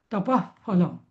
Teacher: जेव्हा प आणि फ च्या जागी जेव्हा विसर्ग येतो तेव्हा त्याचा उच्चार असा अर्धा फ होतो